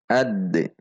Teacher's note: Huruf dal ketika sukun maka dibaca qalqalah. Qalqalahnya sugro karena di tengah kalimat.